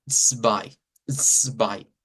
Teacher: Entonces ese sonido es una TS, es un africado.